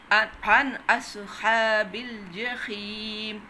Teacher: اس میں آپ نے نون کو ظاہر کر کے جلدی سے پڑھ دینا ہے، کیونکہ الف حرف ہلکی آ گیا نون ساکن کے بعد۔ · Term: اظہار